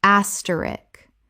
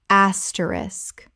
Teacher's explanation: Three syllables with the SK clearly at the end. The K at the end is not silent.